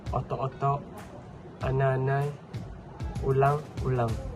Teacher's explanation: penyisipan hentian glotis dalam sempadan kata ganda